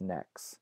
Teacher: you might pronounce that as NEX right without the final T there